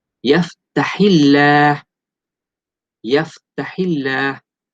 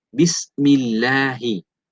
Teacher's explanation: lam pada lafzul jalalah ini dibaca nipis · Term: lamut tarqiq